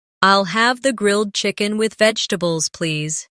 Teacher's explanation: The main stress is on grilled chicken and vegetables.